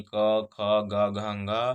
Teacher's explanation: तो इसमें अ, आ, क वर्ग विसर्जनीय विसर्ग और ह का उच्चारण स्थान कंठ होता है।